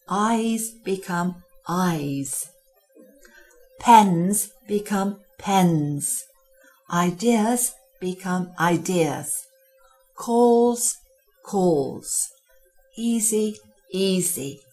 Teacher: in large spaces where your voice has to carry we need to replace the s the unvoiced sound with a voiced Z